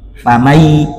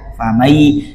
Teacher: Famai, dimasukkan, dilebur bunyi n ke dalam bunyi ya, famai. Dengung, 2 ketukan. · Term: idgham